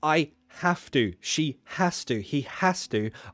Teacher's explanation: when it's i have to she has to he has to i always drop the h